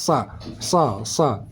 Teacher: SH SH pangkal lidah n naik ke atas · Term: Shad tebal